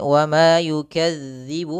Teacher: hati-hati dalam pelafalan zal, ya, zal jangan dibaca dengan za. Jangan yukadzibu, nanti mengganti huruf zal dengan huruf za.